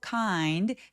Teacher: kind 내려가 주시고요. there was a kind 이렇게 올라가지 않게 해 주세요. 꼭 조사 올리듯이 그렇게 올리시면 안 됩니다.